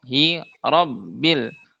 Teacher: Jadi bukan dengan memajukan mulut hi ro ro ro bukan gitu tapi mulutnya tetap terbuka fathah yaitu kaidahnya mulutnya terbuka yang membuat dia tebal itu karena pangkal lidah yang naik ke langit-langit mulut sehingga si suara itu terhalangi oleh pangkal lidah. Jadi si suaranya itu dia tidak langsung keluar ke depan. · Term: tafhim tebal